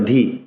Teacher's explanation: দ এর মহাপ্রাণ উচ্চারণ করতে হবে